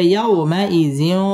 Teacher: জজম ওয়ালা ওয়াও লিনের হরফ তাড়াতাড়ি পড়তে হবে